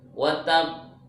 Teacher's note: Ada jeda, ada tahan sedikit sebelum dipantulkan. Kenapa? Karena huruf qalqalahnya itu bertasdid.